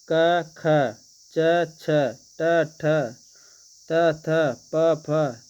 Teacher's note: जिनमें झंकृत नहीं रहती वे अघोष व्यंजन कहलाते हैं। घोष व्यंजन में नाक का प्रयोग होता है जबकि अघोष में केवल सांस का प्रयोग होता है।